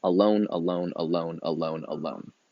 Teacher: it's an unstressed syllable followed by a stress syllable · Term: iambic pentameter